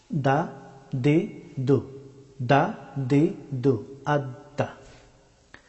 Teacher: দাল হরফটি উচ্চারিত হয় জিহ্বার অগ্রভাগ এবং সামনের দুই দাঁতের গুড়ি